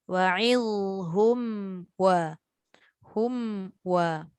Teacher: Wa'ilhum hum wa takut nanti dia jadi idgham ma'al gunnah. Hum kena jelas dulu tutup bibir betul-betul.